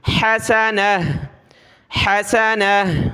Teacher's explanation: فی الدنیا، فی الدنیا حسنہ، حسنہ، تا دو زبر تن، حسنتن، جب رکیں گے وقف کریں گے تو آخر میں یہ گولتا ہا بن جائے گی اور ہا کو گلے سے نکالیں